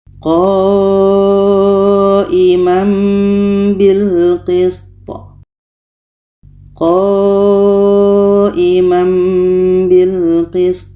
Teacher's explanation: Bunyi tanwin kita ubah kepada mim dan di sini ada dengung. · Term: iqlab